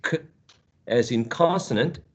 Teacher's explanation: k, as in consonant, is voiceless. The place of articulation, which is velar